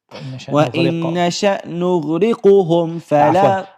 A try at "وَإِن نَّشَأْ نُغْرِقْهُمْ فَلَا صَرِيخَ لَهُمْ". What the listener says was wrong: I'm hearing a dhamma, it's not a dhamma.